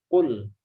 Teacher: Qa ya, qa itu di aqsal lisan ya, pangkal lidah ya, ma'a hanak al-lahmi ya, ma'a hanakil lahmi ya. Jadi pangkal lidah ketemu dengan langit-langit yang lembut di belakang.